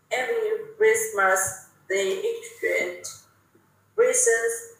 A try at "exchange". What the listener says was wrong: Lại không xì ở chữ exchange.